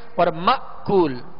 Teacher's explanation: یہاں حمزہ ساکن ہے، حمزہ کو جھٹکے کے ساتھ ادا کریں گے. اور مأکول، دونوں ہونٹوں کو کامل گول کر کے یہ پیش اور یہ مد ادا کرنی ہے.